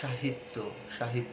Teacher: তুমি যদি আবার বলো সাহিত্য, সাহিত্য দেখো দন্ত স দিয়ে লিখছে কিন্তু তালব্য শ দিয়ে উচ্চারণ করছে।